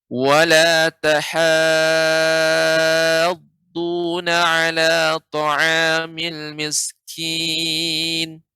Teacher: harus ditinggikan suaranya ketika masuk ke huruf yang bertasydid setelah huruf mad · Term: mad lazim kalimi mutsaqal